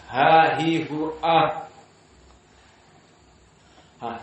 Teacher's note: Dirasakan ada nafas yang masih keluar.